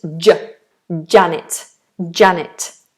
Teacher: It's not strictly plosive, but lots of my students make this fricative. They say Janet, J. But we don't have that friction. It's J, Janet, Janet.